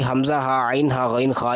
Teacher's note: آپ نے یہ ذہن میں رکھنا ہے کہ نون ساکن ہو اور اسی طرح یا نون تنوین ہو، دونوں کے بعد، نون ساکن یا نون تنوین کے بعد حروف حلقی حمزہ ہا عین ہا غین خا، یہ 6 حروف ہیں جو کہ حلق سے ادا ہوتے ہیں۔ اگر ان میں سے کوئی ایک حرف آ جائے تو وہاں پر اظہار ہوگا، وہاں پر نون ساکن اور نون تنوین کا اظہار ہوگا، یعنی ان کو عدم غنہ کے ساتھ ظاہر کر کے نون ساکن یا نون تنوین کو ادا کرنا ہے۔